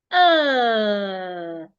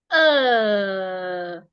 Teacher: uh my lip my tongue is placed in a relaxed position I positioned my tongue on a relaxed position and I made a long sound